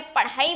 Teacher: ठीक इसी प्रकार से जो ढ है वो मूर्धन्य वर्ण है, तो जब आपने ढक्कन बोला तो जीभ सामान्य गति से पहले मुड़ी, ऊपर वाले स्थान को स्पर्श किया और वापस आ गई, लेकिन नॉर्मल गति से, सामान्य गति से। लेकिन जब आपने पढ़ाई बोला तो जीभ झटके के साथ नीचे आई। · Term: उत्क्षिप्त